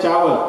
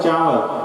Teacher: का है, का ये मुंह से बोला, और का आप लोग बोलते हैं ना, उत्तर प्रदेश में बनारस में बोलते हैं चावल, और आप बोलते हो चावल। तो आप च जब बोलते हो तो नाक को भी शामिल कर देते हो, वो अनुनासिक हो जाता है।